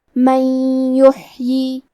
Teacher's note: ہمیں ہا کو حلق کے درمیان والے حصے سے پڑھنا ہے اور کیونکہ ہا ساکن ہے تو ہم ہا کو ظاہر کریں گے۔ · یا حروف الادغام بغنہ میں سے ہے تو ہم یہ حکم کو غنہ اور تشدید کے ساتھ ادا کریں گے۔